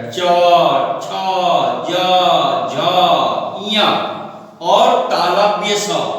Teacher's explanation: दूसरा आते हैं तालव्य। तालव्य इसमें चौवर्ग आते हैं, यानी जिसका उच्चारण तालु के सहायता से, मदद से होता है। जैसे च, देखिएगा जीभ उठ के तालु में जाकर सड़ जाएगा।